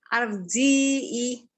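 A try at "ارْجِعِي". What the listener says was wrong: Bukan A, I. Ya, tapi ro-nya tebal.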